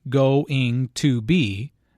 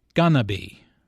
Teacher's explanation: Notice how this is pronounced like gonna be. Instead of 4 syllables, going to be, there are 3 syllables, gonna be.